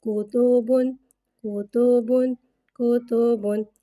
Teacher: 2 پیش کو ہونٹوں کی گلائی کے ساتھ ادا کر کے پڑھیں گے